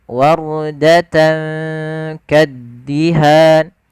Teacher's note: ra yang dibaca dengan bacaan ra tebal, bukan dibaca wardata, yaitu huruf ra-nya tipis tapi tebal. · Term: ra tafkhim